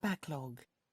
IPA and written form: ˈbækˌlɒɡ (backlog)